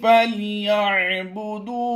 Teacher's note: दाल वाव पेश दू को हमने खींचना है। उसकी वजह यह कि यहाँ पर वाव मद्दा का कायदा होता है, तो हमने यहाँ पर वक़फ़ करना है और यहाँ पर भी वक़फ़ करना है।